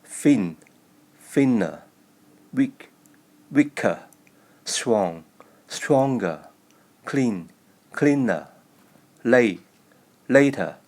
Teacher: Most comparative words end in schwa.